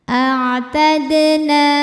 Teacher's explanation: Ada hukum qalqalah sughra, sebab ada huruf dal sukunnya asli dan ada di tengah bacaan. Cara bacanya dipantulkan dalnya dengan pantulan yang kecil.